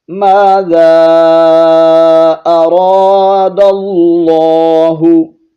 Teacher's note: فَيَقُولُونَ مَاذَا أَرَادَ اللَّهُ، ما یہاں ایک الف کی مقدار اور آگے ذا، یہاں پر مد منفصل ہے، 3 الف کھینچیں گے کیونکہ حرف مدہ کے بعد حمزہ ہے